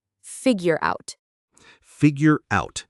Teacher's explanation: It sounds like figure out. The R at the end of figure connects to the O.